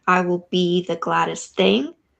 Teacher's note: be is accented versus I will they're not accented so you have sort of this unaccented two syllables I will · Accented just means more air comes out of your mouth when you say it, right? So, like in the line, I will be the gladdest thing, be is accented versus I will, they're not accented.